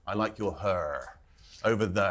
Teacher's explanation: something called rhoticity, which is really landing an R at the end of a word